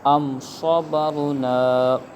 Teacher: ام صبرنا، یہاں پر غنہ نہیں ہوگا کیونکہ میم ساکن کے بعد صاد آ رہا ہے جو کہ با اور میم کے علاوہ حرف ہے، تو لہٰذا یہاں پر اظہار شفوی ہوگا یعنی غنہ نہیں کریں گے